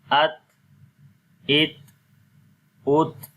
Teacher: ٹھیک ہے، تو جب ہم ات کرتے ہیں تو آواز زبان کی نوک جو ہے وہ ثنایا علیہ کی جڑوں پر لگتی ہے، اور ساتھ ہی وہاں سے زبان تھوڑی سی ہٹ جاتی ہے وہ صفت ہمز کی وجہ سے، جیسے ہم پڑھتے ہیں ات، تو جب ہٹے گی تو سانس جاری ہوگا، تو یہ تا کی کوالٹی ہے، اس کی صفت ہے.